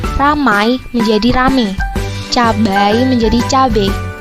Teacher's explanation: Adalah proses perubahan diftong menjadi monoftong. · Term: monoftongisasi